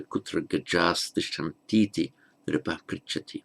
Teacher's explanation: the visarga, the final subdotted H in gaja, changes into S before a following dental ta